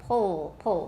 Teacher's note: it's the back of your tongue that becomes very tense and it gets close to your soft palate · uh pull pull that's why we call it a velarized l the tip of your tongue doesn't always touch your alveolar ridge